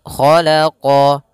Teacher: huruf ko pangkal lidah kita terangkat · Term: istila